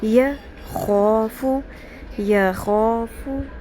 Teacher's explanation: یہاں یہ دھیان رکھنا ہے کہ یخ جوڑنا نہیں ہے، یک خو نہیں پڑھنا